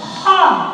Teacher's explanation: Punya sifat isti'la, artinya lidah dinaikkan. Ya, jadi ketika mengucapkan kha, keluarkan dari tenggorokan atas, lidahnya naik, kemudian punya sifat hamas, keluar nafas.